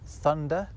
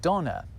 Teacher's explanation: where English developed a th sound in certain words, German went off in a slightly different direction and ended up with a d sound instead